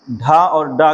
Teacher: ढा और डा का उच्चारण स्थान मूर्धा से है